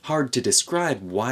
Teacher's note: you can see that b at the end of describe gets weakened before a w sound